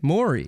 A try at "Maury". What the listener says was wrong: There's no O in it. It's Mari.